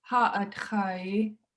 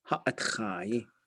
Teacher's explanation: So we should put y on the end. And then a short high vowel will go long and low once we put a suffix on there